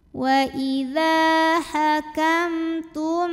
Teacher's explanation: mim sukunnya menghadapi huruf yang bukan mim bukan juga ba, yaitu ta, maka mim sukun kita bunyikan dengan m yang jelas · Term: izhar syafawi